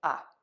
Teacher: we are going to use a relaxed short quick uh